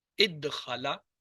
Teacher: پہلے یہ اد دخلا بنا اور پھر دال دونوں جو ہے وہ پہلا ساکن دوسرا متحرک، ادغام ہوا